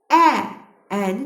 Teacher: dodaqlanmayan saitdir. Ə, əni dəyərkən dodaqlarımız yana çəkilir. Dodaqlanmayan saitdir.